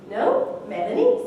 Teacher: so starting mid going to high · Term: high rise